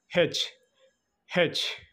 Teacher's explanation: glottal అంటే vocal cords sound వచ్చేసి హెచ్